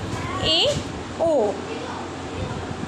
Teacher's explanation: अर्ध सं स्वर के उच्चारण में मुख्य द्वार कम सकरा होता है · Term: अर्ध संवृत स्वर